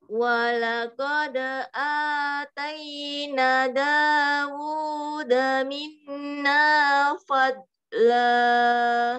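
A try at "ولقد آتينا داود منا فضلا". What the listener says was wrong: Ini ada panjang Bu. Atayna. Nah, ada fathah diikuti alif tadi ini. Jadi panjang.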